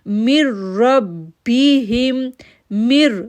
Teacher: میم کو را کے ساتھ جوڑا شدت کے ساتھ